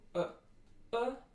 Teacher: is a short near high back rounded lax vowel